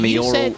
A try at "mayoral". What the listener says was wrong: said mayoral like it was memorial.